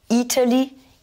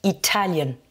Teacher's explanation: Donc là, première syllabe pour le pays, Italian, deuxième syllabe.